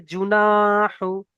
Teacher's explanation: এখানে জিম পেশ জু, হারাকাতের পড়া, টান দেওয়া চলবে না।